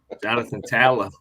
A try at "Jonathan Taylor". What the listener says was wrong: No, you're still not pronouncing the Y.